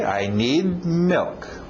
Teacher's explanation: Engole aquele D no final.